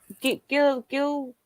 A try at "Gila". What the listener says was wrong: I know it starts with a G, but it's pronounced with an H.